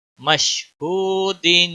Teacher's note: वाव साकिन से पहले पेश वाव मद्दा कहलाएगा, एक अलिफ के बराबर इसको खींचना है।